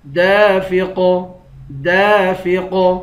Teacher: الف کی مقدار کھینچ کر پڑھیں گے۔ آخر میں قاف ہے، قاف حروف مستعلیہ میں سے ہے، یعنی موٹے حروف میں سے ہے، اس کو موٹا بھی پڑھیں گے، اور قاف حروف قلقلہ ہے، اس کو قلقلہ بھی کریں گے۔